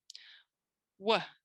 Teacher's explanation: We can see it's a front phoneme, it's a glide, and it's voiced.